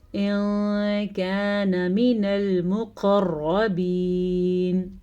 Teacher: نون ساکن کی آواز کو چھپانے کے ساتھ ساتھ غنہ بھی کیا